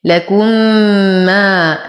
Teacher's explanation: فالحكم إدغام مثلين مع غنة أكمل ما تكون